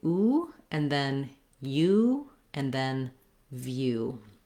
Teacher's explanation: The word view is the same in interview as it is by itself, which is, it's one of our words with the oo sound that also has the glide ya. So I have to move from the v to the ya to the oo.